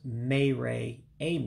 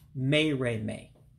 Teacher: And again, this is one of those words where when you see the last two, Mayre and Ame, you run them together. So you drop one of the vowels in Igbo. It's called vowel dropping. So that's why it's not pronounced Mayre Ame.